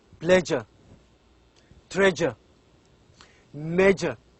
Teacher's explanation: s we pronounce it as J pleasure treasure measure so this this sound is a voiced sound and also it is a palatal sound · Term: voiced palatal